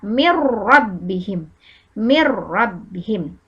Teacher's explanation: bilaguna maka nun sukun nya dimasukkan sejak Roro Bagaimana kalau dimasukkan Nun nya hilang masuk langsung jadi rok jadi seakan-akan roknya bertasydid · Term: idgham bilagunnah, idgham bila guna